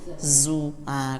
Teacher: Kalau za itu ada sofirnya tipis